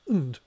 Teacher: It's normally pronounced und with a schwa vowel.